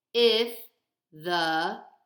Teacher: those are both low so it's going to be unstressed